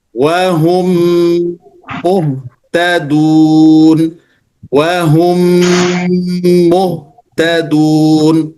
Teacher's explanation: dengan mim dia menimbulkan ghunah atau dengung.